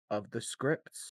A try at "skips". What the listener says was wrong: Skips. I mean, there's no R. I'm assuming skips.